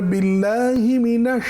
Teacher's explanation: শিন তাফাস্কির হরফ আমি জানি কিন্তু সেই তাফাসসিকে আদায় করতে গিয়ে খুব অতিমাত্রার শীষ দেওয়া যাবে না এটা স্বাভাবিক থাকতে হবে